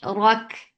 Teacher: Ra is heavy for fatha upon jaws attached with Kaf. Kaf will get sifa of hums, and hums is flow of breath.